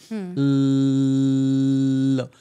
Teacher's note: वरच्या दाताच्या मागे म्हणजे जे मूर्धास्थान आहे, जो मसुडा आहे म्हणजे तिथे त्या मूर्धास्थानावर जीभ लावायची आणि ल म्हणायचं.